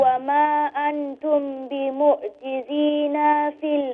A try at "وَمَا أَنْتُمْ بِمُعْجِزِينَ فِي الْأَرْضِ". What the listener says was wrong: No, you still made the noon long. Now, look, you need to, at least I want you to start applying the short sounds. You know, whenever you read the Quran, start applying the short sounds.